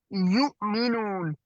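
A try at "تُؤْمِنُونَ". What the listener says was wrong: नहीं यू है ना, तू मीनूना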